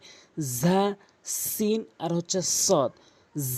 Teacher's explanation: ঝাটি জিহ্বার আগা সামনে দুটি দাঁতের আগা, অর্থাৎ জিহ্বার আগাটি নিয়ে উপরের নিচে দুটি দাঁতের আগাতে লাগাবেন। উপরের দাঁতের আগা এবং নিচের দাঁতের আগার সঙ্গে লাগালে 3টি হরফ উচ্চারণ হবে সঠিকভাবে।